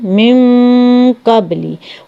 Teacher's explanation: अब देखिए इसी मिसाल को ले लें, मिन कबली, ये जो मैंने आपको अभी बताई है, तो यहाँ पे देखिए नून के बाद जो है ये कौफ जो है मोटा लफ्ज़ है, ठीक है, तो यहाँ पे हम जो है इसको फिर गुन्ना मोटा हमारा होगा।